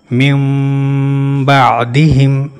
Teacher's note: نون ساکن یا تنوین کے بعد جب حرف با آ جائے تو نون ساکن یا تنوین کا نون میم میں بدل جاتا ہے اور اس کی ادائیگی دونوں ہونٹوں کے درمیان کاغذ کی موٹائی کے برابر فاصلہ رکھتے ہوئے غنہ کے ساتھ کی جاتی ہے